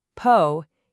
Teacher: that first syllable, po isn't stressed. So, no puff of air.